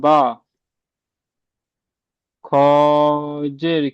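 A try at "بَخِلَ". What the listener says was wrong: বাখি টান হচ্ছে কেন? বাখি। বার বলে টানবেন না, বা জবর বা, খ জের কি,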